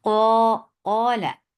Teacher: قاف is heavy and the daraja of level of heaviness is increased because this is alif with fatha, so with mud letter, the qaf, the level of qaf will be more heavy.